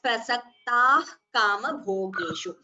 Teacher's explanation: The visarga is followed by ka. So we have Jihva Muliya. Therefore, we don't chant the visarga completely. We chant it as prasaktah kama bhogeshu.